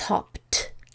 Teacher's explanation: There's no vibration here. So I'm just going to keep the motor off and I'll use the motor off sound, which is t.